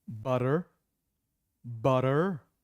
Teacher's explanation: the r both are happening at the same time butter but the t is crisp and the r sound is dropped